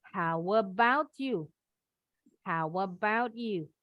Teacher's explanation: Yang ini T ketemu Y boleh bunyinya jadi CH.